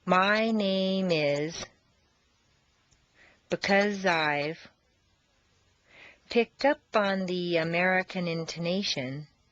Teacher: the z sound at the end of because and the I sound of I blend together smoothly